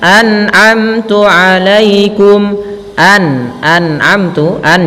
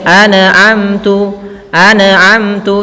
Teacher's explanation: an jelas di sini kita bacakan izhar tidak boleh anamtu anamtu jangan sampai nunnya memantul banyak yang terjadi ketika itu membacanya dengan Nun mantul antuikum jangan